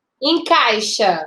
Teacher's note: encaixa primeiro veio a vogal depois a semivogal da mais forte foi pra mais fraca de tongo decrescente